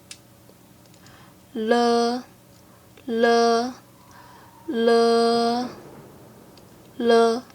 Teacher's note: Air flows around the sides of your tongue.